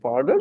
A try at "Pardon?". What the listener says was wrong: Not pardon. Okay, that's falling when you say it like that. Pardon. I won't be clear and the examiner will not understand what you want.